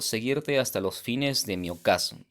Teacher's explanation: la H no impide la formación de la sinalefa y por ende esto se convierte en una sola sílaba, porque la H es considerada como muda o que carece de sonido.